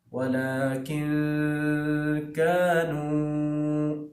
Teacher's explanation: کتنا لمبا کرنا ہے کانوں کو؟ 2 الف، یعنی 2 سیکنڈ لمبا کرنا ہے